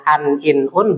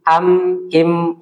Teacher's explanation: Yang tadinya nun sukun atau tanwin maka berubah menjadi mim begitu. Yang tadinya suaranya an in un berubah menjadi am im begitu. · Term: iklab